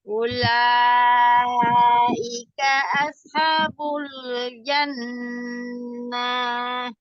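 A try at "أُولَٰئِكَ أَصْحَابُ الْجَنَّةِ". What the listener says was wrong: Oh, tidak panjang. Ulaika ashabul jannah.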